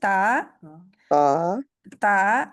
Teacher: तवा भी नहीं कहना इसको क्योंकि त्वा कहेंगे तो वाव आ जाएगी तो आप देख सकते हैं कि ता के आगे अलिफ है डाला हुआ वाव नहीं है।